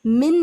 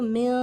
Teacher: नून साकिन की आवाज को मिन नहीं पढ़ेंगे इसको म पढ़ेंगे without touching र tongue to the upper पलेज ऊपर के तालू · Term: इफा